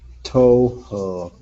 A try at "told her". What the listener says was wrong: Okay, pronounce that D. Put that D up against the word her, so it's told her.